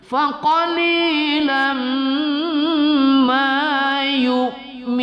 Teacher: lam berbaris tanwin bertemu mim kita baca gunnah pada idgham ma'al gunnah atau idgham bi gunnah.